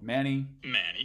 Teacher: f0 for an L star which we see on the first accented syllable of mani